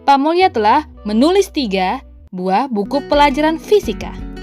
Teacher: Yang ingin kita tekankan adalah menulis 3 dan fisika. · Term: Stressing